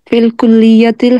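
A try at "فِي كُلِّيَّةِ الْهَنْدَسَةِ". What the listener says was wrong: फिल कुलियाती भी ना पढ़े इसको, फी कुलियाती है।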